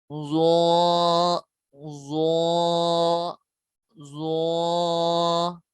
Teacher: ٹھیک ہے، زوا زبان کا سیرا اور اوپر کے دانتوں کے اندرونی کنارے سے ادا ہوتے ہیں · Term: حروف لثویہ